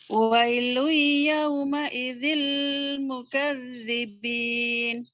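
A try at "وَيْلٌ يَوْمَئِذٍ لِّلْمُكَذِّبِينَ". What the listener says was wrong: Lil. Wailun yauma idzin lil mukazzibin. Lilnya ketinggalan jaringan. Jadi situ ada lil ya, lil ya. Tanwin dengan lam.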